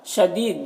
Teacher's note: دی میں یا مدہ ہے ایک الف کے برابر کھینچیں گے